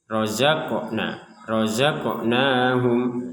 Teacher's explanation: Huruf qof yang sukun ini kita pantulkan ini huruf qof sukun.